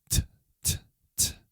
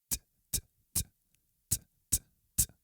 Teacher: Like the tip of the tongue hits the back of your front teeth.